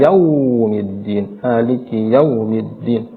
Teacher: wunya terlalu dimonyongkan sedangkan yau di sana sedang saja pertengahan saja kita membacanya